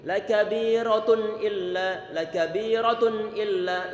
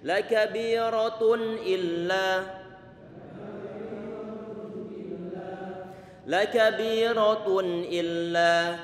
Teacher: Suara an illa ini gunnah di satu sisi diberikan sifat bainiyah, tidak dialirkan sebagai huruf syiddah, tidak sebagai huruf khawah dan tidak dibuat berhenti sebagaimana huruf-huruf syiddah.